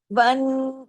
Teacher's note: نون پہ تشدید ہے، ڈبل نون ہے، غنہ ہوگا. بڑا غنہ ہوگا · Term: اکمل